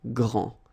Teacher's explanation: you don't pronounce the final D, will be exactly the same as the plural form for the masculine, grand.